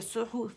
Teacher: ہو باریک ہے، ہے کا مخرج پکڑیں گے، صاد کا بھی پکڑ کے گولائی دیں گے، ہے کا بھی، ہے واسط الحلق سے ادا ہوگا، گولائی دیں گے. باریک ہے.